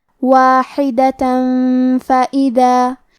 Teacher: کلمت واحدہ کے آخری میں تا پہ تنوین زبر ہے، پھر حرف الفا ہے کلمت فائدہ، فا حروف الاخفاء میں سے ہے تو ہم یہ حکم کو غنہ کے ساتھ ادا کریں گے · کلمت فائدہ میں حرف الدال کے ادائیگی زبان کے سر اور اوپر والے دانتوں کے اندرونی کناروں سے ہے